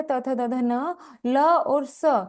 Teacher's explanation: तू तवर्ग हो गया त थ द ध न। ल और स, ये हमारे दंत्य वर्ण है। ईशाम वर्णानाम उच्चारणाम दंत स्थाने भवति।